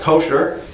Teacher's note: usually pronounced with the accent on the first syllable